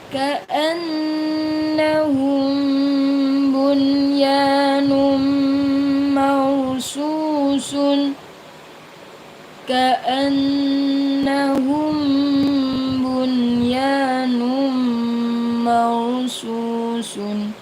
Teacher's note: Ingat rnya dibaca tebal. Rnya dibaca tebal karena didahului dengan fathah. Harakat fathah.